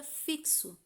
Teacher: o X ele não tem o som do sh, ele tem som de x, sai o K e o S, o som de KS